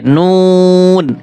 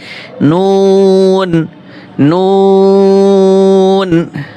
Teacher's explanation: জিহ্বার আগা তার বরাবর উপরের তালুর সঙ্গে লাগিয়ে একটি হরফ উচ্চারিত হয়